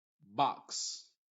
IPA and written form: bɑks (Box)